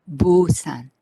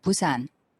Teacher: be busan with voice and vibration of the vocal code however korean name busan doesn't have any vibration in the consonant